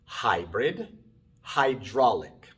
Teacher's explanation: estas palabras comienzan con d y n y por eso la y se pronuncia ay